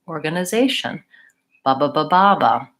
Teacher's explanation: those three syllables are very quick zey is longer and tion is quick again